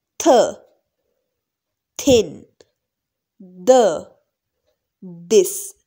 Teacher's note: tip of the tongue is touching the upper teeth. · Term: dental sounds